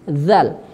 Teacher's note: huruf dzal sifatnya juga tipis dia tidak tebal